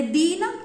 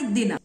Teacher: दीन मध्ये दीर्घ दी आणि दिन मध्ये ऱ्हस्व दी